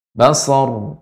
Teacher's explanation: Ra ketika sukun, yang disukunkan sebelumnya fathah, dibaca dengan tebal, dan sifatnya adalah bainiyah, sedikit mengalir.